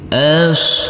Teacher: huruf ba langsung masuk ke huruf lam dan huruf alifnya kita anggap tidak ada